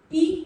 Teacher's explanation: जब हम ई का उच्चारण करेंगे तो हमारा मुंह पूरा ना खुल के थोड़ा खुलेगा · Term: संवर्त स्वर